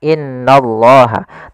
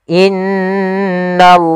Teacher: in maka ditahan sepanjang dua harakat tidak langsung Dibaca innallah tapi ditahan dulu sepanjang dua harakat untuk menyempurnakan bacaan gunah